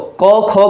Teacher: क, ख कहूं तो कहीं ना कहीं जो स्वर तंत्रिकाएं होती हैं उनमें कंपन नहीं होती है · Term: अघोष